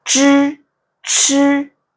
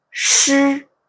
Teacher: Zh 와 ch 는 파찰음 입니다 . Sh 는 마찰음 입니다 .